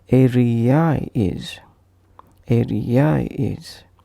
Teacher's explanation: When word ends with sound A and another word starts with sound I, as in area is, here again we will add a soft Y in between two vowels. So it is pronounced as area is.